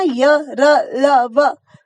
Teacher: इनका उच्चारण करते समय ना जीभ किसी भी भाग को पूरी तरह नहीं छूती। आप देखेंगे ना य, र, ल, व, तो जीभ किसी भी भाग को पूरी तरीके से नहीं छू रही, वो बीच में ही रह जा रही है। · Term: अंतस्थ व्यंजन